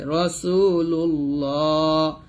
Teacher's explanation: তো এই আল্লাহ শব্দের লাম এটা যখন জবর আসবে এবং পেশ আসবে তখন লামটা মোটা হয়।